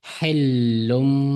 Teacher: buni hillun deganni hillum deb iqlob qo'yamiz.